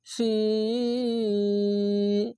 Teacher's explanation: মাদ্দে আরজি তার জন্য তিন আলিফ টেনে পড়বেন